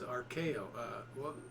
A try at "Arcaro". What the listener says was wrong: Eddie Arcaro. Well, maybe you're right, but there is an R in there.